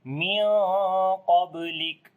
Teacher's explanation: That's why we stop here. And when we stop, so then we make shiddat and hams quality in the letter kaf · On the ba we make qalqala, which is the weak qalqala